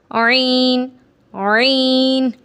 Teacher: عین کو پڑھیں گے تو حلق کے بیچ والے حصے سے ادا ہوگا، عین، عین۔ آپ نے عین کی آواز کو پہلے تھوڑا سا سکویز کرنا ہے، جیسے کپڑے کو ہم سکویز کرتے ہیں، جیسے کپڑے کو ہم نچوڑتے ہیں۔